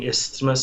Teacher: you just say that the s sound and the th sound separately in that one the th is a little bit less strong